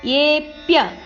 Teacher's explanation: ಎ ಅಕ್ಷರನ್ನು ಸ್ವಲ್ಪ ದೀರ್ಘ ಹೇಳಬೇಕು